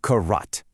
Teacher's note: It describes a word that has this little unstressed minor syllable just kind of tacked on to the front of a main, fully stressed syllable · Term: half syllable